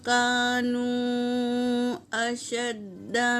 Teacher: اور میم ساکن کے بعد ما اور میم کے علاوہ کاف آیا ہے تو یہاں پر میم کا اظہار ہوگا۔ اور کانو میں مد ہے، مد منفصل، اسے 3 سے 4 الف کے مقدار کھینچ کر پڑھیں گے